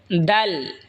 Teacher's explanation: জিহ্বার আগা সামনের ওপরের দুই দাঁতের গোড়ার সঙ্গে লাগাই উচ্চারণ হবে দাল